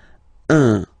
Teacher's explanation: if you listen to me you don't hear any n